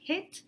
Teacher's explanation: So this is the capital I, which is the E sound for hit, and this is a high front unrounded lax vowel